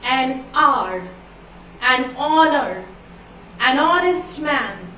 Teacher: In all these examples, you can see the first letter H is silent.